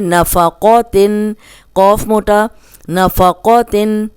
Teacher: قوف موٹا ہے تو زبر کے ساتھ بھی ہم اس کو موٹا ہی پڑھیں گے۔